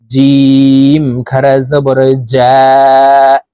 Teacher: তা খারা জবর তা, তা খারা জবর তা, সা খারা জবর সা, সা খারা জবর সা, জিম খারা জবর জা। জিম হরফ জিহ্বার মধ্যখান থেকে উচ্চারণ করতে হবে, কারণ জিমের মাখরাজ জিহ্বার মধ্যখান থেকে হবে।